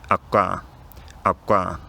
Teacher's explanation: my lips are rounded the whole time I'm saying the k sound, and the lip rounding is kind of spilling over a bit into the surrounding vowels.